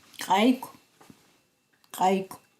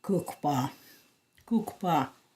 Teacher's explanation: The next sound is the labialized K. This is a K with a tiny raised W after it and sounds like qua.